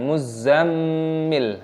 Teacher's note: Mim tasdid itu hukumnya dibaca ghunnah berdengung, jadi dengungkan.